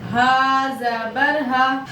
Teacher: حلق سینے کی طرف سے ادا کرنا ہے اس ہا کو